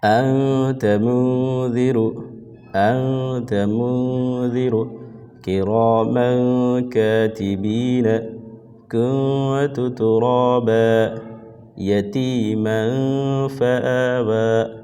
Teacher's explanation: سیدھے اس کے اپوزٹ ہے کہ نون ساکن اور تنوین کے بعد حروف اخفا، یعنی کہ ان 15 حروف میں سے تا، ثا، جیم، دال، ذال، ذا، سین، شین، صاد، ضاد، طا، ظا، فا، قاف، کاف، کوئی بھی حرف آئے تو یہاں پہ نون کی آواز کو ناک میں چھپا کر پڑھیں گے